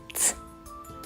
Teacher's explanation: горло мовчить звук ц глухий